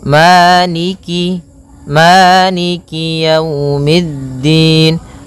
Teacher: Jadi kemudian kasrahnya juga disempurnakan, jangan sampai dibaca dengan e, tapi dia i